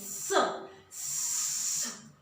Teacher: जीभ जो है ना दोनों दांतों के बीच में आती है, स स, इसलिए इसे दंत स कहा जाता है।